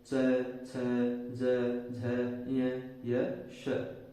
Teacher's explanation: इनका उच्चारण तालु की सहायता से होता है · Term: तालव्य व्यंजन